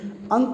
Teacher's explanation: अंक जो होता है उसका उच्चारण स्थान नाक से होता है। मतलब आपने अगर नाक बंद कर दिया तो आप अंक का उच्चारण कर ही नहीं सकते हैं। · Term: नासिक स्वर